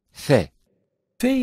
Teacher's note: interspace of the mouth it is a strong consonant phae-phae is pronounced when the edges of upper teeth touched the wet portion of lower lip